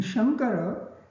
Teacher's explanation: In Shankara, N stands for ng because the consonant after the anunasikam is ka, and ng is anunasikam of ka varga.